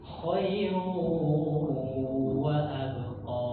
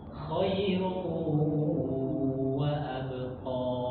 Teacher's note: maka kita bersuara u, khairu wa abqa, sambil didengungkan di dalam hidung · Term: idgham biguna